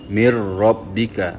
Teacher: Asalnya perkataan min rabbika. Tetapi bila masuk ke dalam huruf ra dia jadi mir rabbika tanpa kita dengungkan.